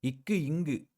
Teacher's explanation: இங்க முயற்சி பிறப்பு அப்படின்னு வருும் பொழுது இக்கு இங்கு இது எல்லாமே முதல் பகுதி நாவின் முதல் பகுதி அன்னத்தை தொடுவதனால் தோன்றுகிறது